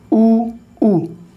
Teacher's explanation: ऊ का उच्चारण स्थान जीभ के कौन से भाग से होता है, पीछे वाले भाग से होता है, पक्ष भाग से।